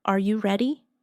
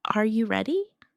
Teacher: For example, when a native speaker asks a yes or no question like, "Are you ready?" The pitch of their voice goes up at the end. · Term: intonation